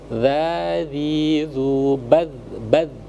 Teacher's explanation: Jadi tempat keluar hurufnya itu adalah ujung lidah disentuhkan dengan ujung gigi bagian atas. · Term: dzal